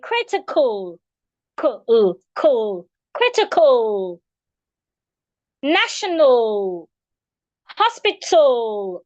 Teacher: the letter A there is usually being reduced into a schwa.